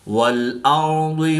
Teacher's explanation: والارض وما طحاها، را ساکن سے پہلے زبر ہے تو را کو پر یعنی موٹا پڑھیں گے۔ ضاد حروف مستعلیہ میں سے ہے تو اس کو پر یعنی موٹا پڑھیں گے۔ طا بھی حروف مستعلیہ میں سے ہے تو اس کو پر یعنی موٹا پڑھیں گے۔